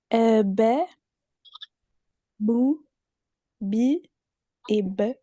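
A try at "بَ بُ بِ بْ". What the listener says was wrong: Ouais, c'est ça, exactement.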